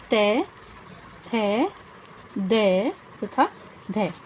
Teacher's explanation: दंते व्यंजन। या फिर दांतों से उच्चारित होने वाले व्यंजन।